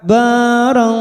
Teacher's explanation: fathah tanwin, namanya bacaan ikhfa hakiki, kita samarkan bunyi tanwin